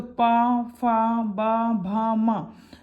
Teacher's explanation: अब पा वर्ग ओष्ठ, जैसे आप पा बोलो तो पा में आपके दोनों लिप्स जुड़ते हैं, फिर आप बोलते हैं।